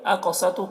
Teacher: قاف کو پر پڑھیں گے اور قاف میں قلقلہ کریں گے کیونکہ قاف حروف مستعلیہ میں سے ہے، اس وجہ سے پر پڑھیں گے.